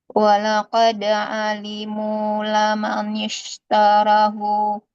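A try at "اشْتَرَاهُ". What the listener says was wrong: Taruh, bukan tarak ya, hati-hati.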